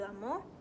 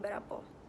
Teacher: di mana vowel A dan E diubah menjadi O, such as lama menjadi lamo, berapa menjadi barapo. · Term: Minang dialect